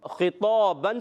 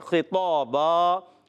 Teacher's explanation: 2 زبر کی تنوین کو الف سے بدلیں گے. خطابن سے خطابا.